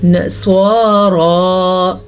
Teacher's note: سواد کو تو ہر حالت میں پر پڑا جاتا ہے لیکن را کو کھڑی زبر کی وجہ سے پر پڑھیں گے